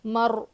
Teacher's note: را ساکن سے پہلے زبر ہو تو را کو پر پڑھیں گے، ہیوی پڑھیں گے، موٹا پڑھیں گے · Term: را موٹی